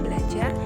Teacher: Namun, terdapat juga kata-kata dengan penekanan pada suku kata kedua seperti dalam kata belajar yang penekanannya jatuh pada suku kata ja